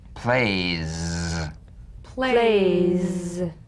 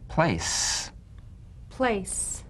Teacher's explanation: one has vocal chord vibration the other is unvoiced z as in plays plays s as in place place B